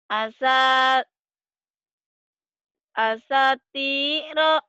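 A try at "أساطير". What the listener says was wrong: Tinggal panjang pendeknya. Sekarang benar to itu. Cuman panjangnya yang panjang sa sama ti.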